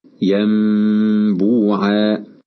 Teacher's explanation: تفرج الشفتان قليلا مع الإتيان بغنة بمقدار حركتين، كقوله تعالى ينبوعا، فكلمة ينبوعا النون فيها ساكنة، وجاء بعدها حرف الباء فقلبناها ميما مخفاه، هكذا ينبوعا. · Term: الإقلاب